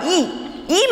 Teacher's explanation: आपल्या जिभेचा जो पुढचा भाग आहे, अग्रभाग ज्याला आपण म्हणतो, हे टोकाकडचा भाग आपण ज्याला म्हणतो, तो टोकाकडचा भाग उचलला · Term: अग्रस्वर